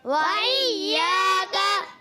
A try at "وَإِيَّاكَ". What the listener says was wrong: اچھا کاف کو باریک رکھنا کسی کی آواز ہے قا نہیں کیا وَإِيَّاكَ